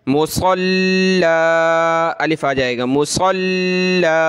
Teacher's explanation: زبر کی تنوین ہے نا، تو اس میں الف ایک چھپا رہتا ہے، وقف میں وہ ظاہر ہو جاتا ہے